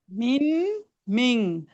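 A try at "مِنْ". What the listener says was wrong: সবগুলো উচ্চারণই হবে, মানে এক কথা হচ্ছে এখানে ন উচ্চারণটা হবে না, অনুস্বার উচ্চারণ হবে, বুঝছেন? হ্যাঁ, মানে এই নটা উচ্চারণ হবে না, নয়ের জায়গায় এই জিনিসটা উচ্চারণ হবে, বুঝছেন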